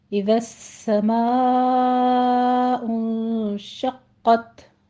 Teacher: اذا السماء انشقت، اذا نرمی سے پڑھیں گے لیکن آگے سین ہے تشدید والا تو اس کو سختی سے آپ نے سیٹی کی آواز کے ساتھ پڑھنا ہے۔ آگے ما کو آپ نے ماں نہیں کہنا، ناک میں آواز نہیں جانی چاہیے۔